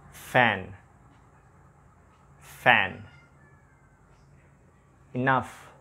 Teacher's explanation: when I pronounce this sound i touch my lower lip with my upper teeth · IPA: /f/